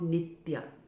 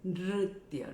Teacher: the tongue goes up and you're making that motorbike sound